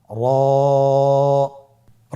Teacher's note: জিহ্বার আগার উল্টা পিঠ তার বরাবর উপরে তালের সঙ্গে লাগিয়ে উচ্চারিত হয়